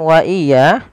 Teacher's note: mim mati bertemu dengan huruf wau di mana kita namakan dengan zhar syafawi suara mimnya dijelaskan